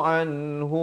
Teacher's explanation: izhar halqi, jangan panjang, nun mati bertemu ha